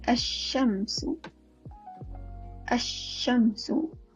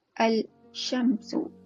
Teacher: Kita idghamkan. Kita masukkan bunyi huruf Shin.